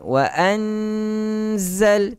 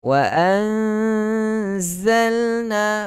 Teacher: sembunyikan bunyi nun mati ke dalam huruf zai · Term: ikhfa hakiki